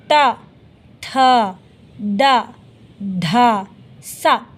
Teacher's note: ಹಲ್ಲಿನ ಸಹಾಯದಿಂದ ಹುಟ್ಟುವ ವರ್ಣಗಳು ದಂತ್ಯ ವರ್ಣಗಳು